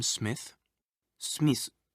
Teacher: japanese doesn't normally allow for double consonants like sm you usually need to put a vowel between them